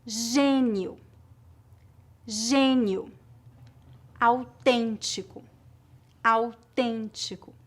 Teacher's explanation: Se a vogal E tiver acento gráfico, circunflexo ou agudo, mas for seguida pelas letras N ou M, a pronúncia geralmente é nasal.